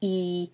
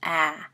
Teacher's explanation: You can put your hand underneath your chin and say E as in B, and then go down to the bottom, say A as in bat, and you can see, you can feel and see the difference in high jaw placement, E, and low jaw placement, A.